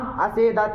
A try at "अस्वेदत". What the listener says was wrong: से बोला है। अरे स्वीद धातु इतना ही तुमको नहीं पता है।